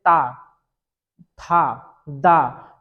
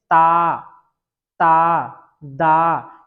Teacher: तो आपकी जो जिह्वा है वो दांतों को स्पर्श करती है